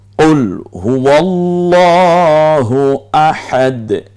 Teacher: এই হাটা কণ্ঠনালীতে চাপ দিয়ে ঠিক কণ্ঠনালীর মাঝখান থেকে উচ্চারিত হয়, আওসাত হলক বলে এটাকে।